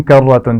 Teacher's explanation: کرتن، را موٹی پڑی جائے گی. خاسرہ، خا بھی موٹا پڑا جائے گا اور را بھی موٹی پڑی جائے گی.